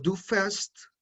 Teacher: Entonces, por ejemplo, aquí en el verbo fahren, entonces cuando lo conjugamos en segunda persona, decimos du fährst, ya no digo, esa A ya no suena como una A por el umlaut, sino que suena como una E